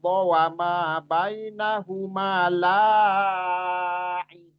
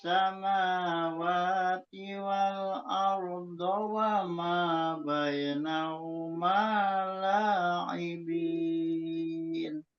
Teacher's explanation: lanya itu jadi kayak mad wajib jadinya padahal dia mad thobii biasa aja